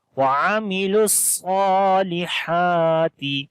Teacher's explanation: We do not long any letter here, but lam we connect with the sad, with the heavy sound on the sad